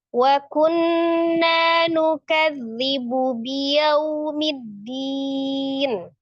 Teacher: Nukadzibu biyau, yau ada waw sukun sebelumnya fathah di huruf ya, yau harfulin diwasal dibaca pendek ya. Middin ada alif lam samsia. Jadi langsung diidgham samsi, langsung diidghamkan ditasdidkan ke huruf dal.